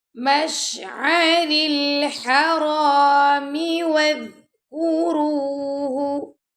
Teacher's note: ذال کو نرمی سے پڑھیں گے، را کو پر پڑھیں گے